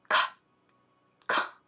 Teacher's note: ಇಲ್ಲಿ ವೈಬ್ರೇಷನ್ ಬರಬಾರ್ದು. ಒಂದು ವೇಳೆ ವೈಬ್ರೇಷನ್ ಬರ್ತಾ ಇದೆ ಅಂದ್ರೆ ನೀವು ಆ ಸೌಂಡನ್ನು ತಪ್ಪಾಗಿ ಹೇಳ್ತಾ ಇದ್ದೀರಾ ಅಂತ ಅರ್ಥ